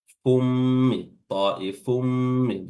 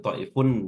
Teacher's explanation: Dhammatain bertemu dengan min itu atau tanwin bertemu dengan mim, hukumnya adalah idgham bi gunnah. Idgham memasukkan tanwinnya dimasukkan ke huruf mim, jadi langsung fummi, ta'ifummi, bukan lagi ta'ifun nih.